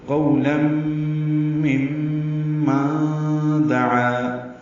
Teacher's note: تو قولم مما دعا، دال کو جلدی پڑھنا ہے، عین پر فتحہ ہے یعنی زبر ہے، اور اس کے بعد الف آنے کی وجہ سے مد اصلی الف مدہ ہے. الف مدہ کے بعد دوسرے کلمے میں حمزہ ہے، جس کی وجہ سے مد منفصل آئی ہے. اب اس کو 4 حرکات لمبا کریں گے. دعا الہ میں لام پر کھڑا زبر تھا، لیکن آگے لفظ اللہ کا حمزہ عارضی ہونے کی وجہ سے اللہ ملا دیا گیا.